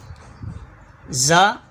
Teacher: زا زبان کی نوک اور دونوں دانتوں کے اندرونی کنارے سے ادا ہوتا ہے۔